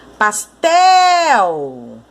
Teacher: A sílaba tônica de pastel é o tel.